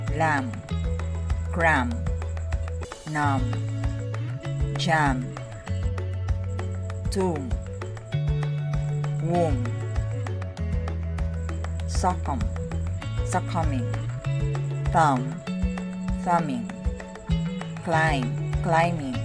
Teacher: Don't pronounce the B after M in the following words